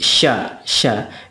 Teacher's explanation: Shin itu ya hampir mirip juga dengan Sin. Hanya saja ada sifat plusnya yaitu tafashi. Tafashi itu artinya menyembur.